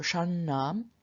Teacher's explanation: Notice that both of the nasals here, both of the n's are retroflex